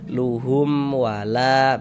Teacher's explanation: dibaca jelas tak berdenggung baca pendek saja. · La dibaca panjang. Ini namanya mad jaiz munfasil. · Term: izhar syafawi